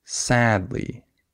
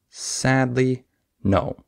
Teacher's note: syllables sadly no so the way I would say that is I would stress the first syllable I would have emphasis on sad not on Lee I don't say sadly I say sadly right so so I